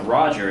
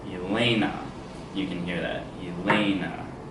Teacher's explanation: So it starts low, goes high, and returns low. So that is the opposite of a trochee, or trochaic. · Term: iambic